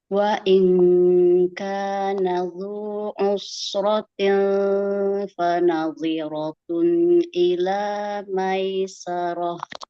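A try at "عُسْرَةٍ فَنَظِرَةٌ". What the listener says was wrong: Usrati tinya tipisan ya. Usratin fanadhiratun tinfa. Kasrohnya jelaskan dulu ikhfanya. ti dulu. Tinfa. Usrati i-nya juga selesaikan. Usratin fa. Ya, tinfa. Samarkan lagi ikhfanya. Tinfa.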